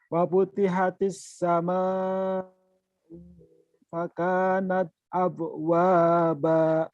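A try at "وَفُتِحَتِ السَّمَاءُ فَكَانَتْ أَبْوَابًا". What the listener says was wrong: Sampai yang salahnya u-nya ketahan. Lihat mulutnya. Fa wa futihatis sama ufa sama ufa kanat abwaba.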